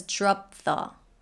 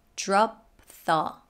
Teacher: p she doesn't say drop the she says drop thaw so she goes into position for the p stops there and releases the th